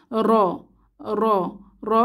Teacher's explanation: ও পেশ ধরে পড়লে র মোটা করে করতে হয় র তখন জিহবার আগা একটা কম্পনের সৃষ্টি হয় এটাকে তাকরার বলে · এই হরফটি মাখরাজ থেকে উচ্চারণের সময় একটু কম্পনের সৃষ্টি হয়। যেমন জিহবার আগাতে একটু কম্পনের সৃষ্টি হয়, যাকে তাকরার বলে। র র র মোটা করে বলতে হয়।